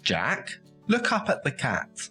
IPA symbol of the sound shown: æ